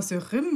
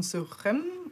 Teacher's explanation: Manchmal hört man Sürim mit ‚i‘ und manchmal hört man eher so ein ‚sürem‘ oder abgeschwächt, einen e-haltigen Laut.